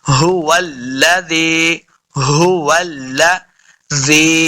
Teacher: اس بات کا خیال رکھنا ہے کہ لام کو پر نہیں پڑھنا۔